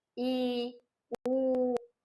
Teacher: जीभ को ऊंचा लेकर जाते हैं और ताल के पास मुख द्वार सकरा या बंद छोटा होता है और कम खुलता है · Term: समृत स्वर